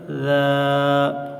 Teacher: زبان کی نوک اوپر ثنایا علیہ کے کنارے پر لگائیں تو ذال ادا ہوتا ہے۔